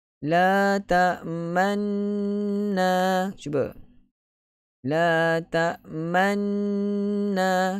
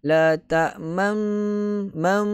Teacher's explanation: Ketika ghunnah memuncungkan kedua-dua bibir ataupun kita panggil ishmam, kedua-dua bibir tanpa sebarang bunyi. Muncung, memang muncung, tapi jangan muncung dengan bunyi la ta'mam mam.